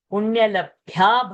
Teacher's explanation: bha is a mahaprana